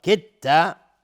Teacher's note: کدت اینجا دال بعدش تا اومده. ادغام متجانسین یعنی دال در تا ادغام میشه